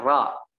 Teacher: makhrajnya di punggung lidah antara langit-langit atas dengan gusi, ya, ra, gitu ya. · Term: ro